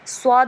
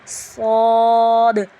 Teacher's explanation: اب یہ 7 حروف ایسے ہیں، ان کو حروف مستعلیہ کہا جاتا ہے، یعنی یہ حروف ایسے ہیں جن کو پڑھتے وقت ہمیں پر آواز رکھنی ہے، باریک نہیں رکھنی